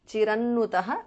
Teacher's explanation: Anuswara changes to Nu there.